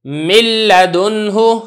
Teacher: یہ لام کی مثال دیکھیں، اب یہ جو لام ہے اور را، جیسا کہ آپ کو معلوم ہے کہ اس کے اندر ادغام میں تام ادا ہوتا ہے تو صفت غنہ بالکل بھی ادا نہیں کی جائے گی